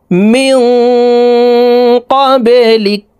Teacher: বা কলকলার হরফ নিচের দিকে ধাবিত করে ধাক্কা দিয়ে উচ্চারণ করতে হবে।